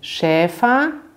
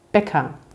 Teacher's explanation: beim Schäfer wird das Ä lang gesprochen, anders als beim Bäcker